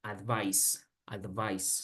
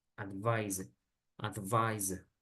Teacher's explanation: Pero entonces, otra vez, advice con C se pronuncia así, advice, advice, sin mucha complejidad. Now, the verb is pronounced advise como con Z.